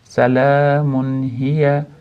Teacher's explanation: munda zamalik tanvin, ya'ni izhor qoidasi, nunni aniq bildirib o'qiymiz, chunki ha harfiga yo'liqyapdi.